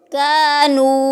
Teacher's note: کانو ایک الف کی مقدار میں لمبا کریں گے